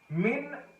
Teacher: نون ساکن کے بعد ہمیں حروف حلقی میں سے حمزہ مل رہا ہے، اسی لیے ہم یہاں پر غنہ نہیں کر رہے، کیونکہ یہ حروف اخفاء میں سے یا حروف یرملون میں سے کوئی ایسا حرف نہیں ہے جہاں ہم غنہ کریں، ٹھیک ہے۔ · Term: اظہار